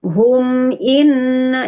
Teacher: jadi humnya hanya 1 ketuk saja, hanya 1 harokat saja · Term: izhar syafawi